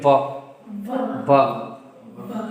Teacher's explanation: ये व जो है दंत और ओष्ठ से होना चाहिए। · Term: दंतोष्ठ